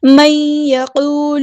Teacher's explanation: نون ساکن کے بعد یا ہے، ادغام مع الغنہ ہو رہا ہے